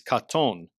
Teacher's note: With regard to the AU pattern, a paradigmatic form is katon, which has the long A-class, A-type vowel kamatz in the first syllable, and the long U-class, O-type vowel cholam in the second syllable